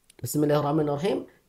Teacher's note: sembunyikanlah atau ringankanlah sifat takrir ketika mendapati huruf ro itu tasdid